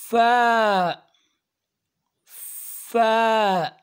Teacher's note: دانتوں کو نیچے والے ہونٹوں کے ساتھ لگانا ہے تب فا ادا ہوگا